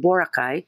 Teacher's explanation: the way foreigners mostly Americans say it with a first syllable stress instead of pronouncing it the way the locals do